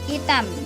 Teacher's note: Bunyi frikatif glotal atau H tidak muncul jika pada awal kata